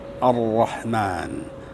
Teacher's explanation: Getarannya minimal, ya. Jadi ujung lidah ketemu dengan gusi di belakang mahrotnya huruf nun. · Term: huruf ro